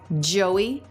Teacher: Here, Joey, it's going up, questioning intonation.